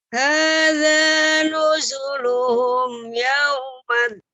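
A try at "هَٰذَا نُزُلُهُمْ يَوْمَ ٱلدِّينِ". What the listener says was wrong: Ya, sempurnakan mim sukunnya ya. Mim sukunnya bertemu dengan huruf apa saja dia izhar. Jadi luhum. Nah, pas luhu-nya itu monyongkan dua bibir, kemudian mimnya kembali dengan sempurna bertemunya dengan dua bibir ya sampai dia bertemu baru yauma. Wawnya yau monyongkan dulu, sempurnakan yaumaddin. Yau. Nah, itu monyongkan ya. Tidak, ketika dia mim sukunnya tidak ya.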